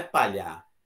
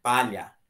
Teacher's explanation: paroxítona ou seja a penúltima é mais forte